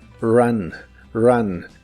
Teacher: La R de inglés es muy suave y la U de esta palabra se pronuncia como una A normal.